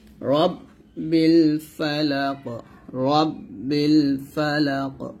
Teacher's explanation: এখানে রাব বলবেন না, রট মোটা করে বলবেন